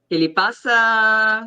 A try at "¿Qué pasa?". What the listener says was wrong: I got the question mark. I want to hear more of the exclamation mark too.